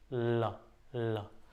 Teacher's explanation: आप फील करोगे बोलोगे तो ल। दो तरफ खिड़की टाइप की खुली बन जा रही है। तो पार्श्व यानी कि अगल-बगल पार्श्विक माने अगल-बगल की खुली खिड़की टाइप की बन जाना।